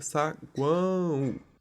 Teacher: o o e o u a gente pronuncia com som de u. E o a é pronunciado com mais intensidade, só que nasalizado.